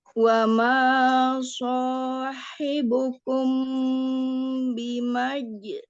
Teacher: Bimajnun. Qalqalahnya disambung bunyinya dengan huruf nun.